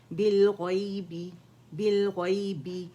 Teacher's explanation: با کے لیے دونوں ہونٹوں کو ٹچ کریں گے, بی کی ساؤنڈ آئے گی